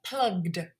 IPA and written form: plʌgd (plugged)